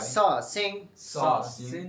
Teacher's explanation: জিহ্বার সম্মুখভাগ। তালুতে স্পর্শ করে তালুতে স্পর্শ করে উচ্চারিত হয়।